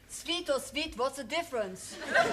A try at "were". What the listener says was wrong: Well, the difference is that you must learn to say were and not the. Were.